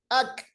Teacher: अक कैसे हमने कैफ की आवाज को रोका, मजबूती के साथ रोका, बिल्कुल बंद हो गई आवाज। अल्लाहु अकबर, अकबर, अक, देखिए अक, इसको हम कहते हैं शदीदा इन हरूफ को, और इस सिफत को कहते हैं शिद्दा।